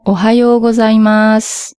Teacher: Le dernier son sous, on a tendance à pas le prononcer tout à fait et quand on parle, on fait le plus souvent Ohioas. Le ou final se perd.